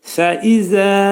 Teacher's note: Fəizədə fə incə samit, incə. Fə hərfinin məxrəci yuxarı üst dişlə alt dodağın arasında olacaqdır.